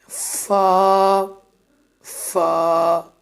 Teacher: دونوں ہونٹوں کی گولائی سے ادا ہوتا ہے یہ حروف ایک ہی ہے: واو، واو۔ اوپر کے دانتوں کے کنارے اور نیچے کے ہونٹ کے تری والے حصے سے ادا ہونے والا حروف